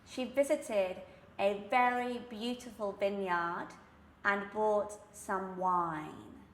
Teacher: my sound is very much resonating at the back even though I do have these sounds which begin at the front of the mouth the lips for the V and the B